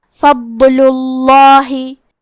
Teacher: حرف الضاد ہے، تو ہمیں ضاد کو ظاہر کرنا ہے اور ہم یہ حرف کو موٹی آواز میں پڑھیں گے۔ کیونکہ لام پہ پیش ہے لہذا لفظ الجلالہ کے لام کا حکم ہے تفخیم، تو ہمیں حرف اللام کو موٹی آواز میں پڑھنا ہے فضل اللہ۔